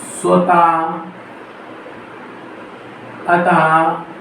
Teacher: विसर्ग भी स्वर के बाद आता है। इसका उच्चारण हा की तरह होता है।